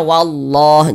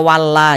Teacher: maka lafaz Allah kita baca tebal sehingga kita baca wallah Jangan dibaca walla jangan tapi ditebalkan yang dapat menebalkan lafaz Allah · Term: tafkhim, tabkhim